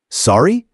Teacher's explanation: You say it with a rising intonation to show you didn't hear or understand.